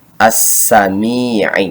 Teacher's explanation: dengan Al Syamsiah tidak lagi dibaca tetapi mim Ya Sukun kasrahmi dibaca panjang 2 harokat karena ada kasrah yang menghadapi Ya Sukun disebutnya Mad Thobi'i · ketika alif lam Al bertemu dengan Sin maka dibacanya harus di idghomkan